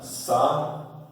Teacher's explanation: Porque você no I, você tem a sílaba tônica, tá? Na vogal I.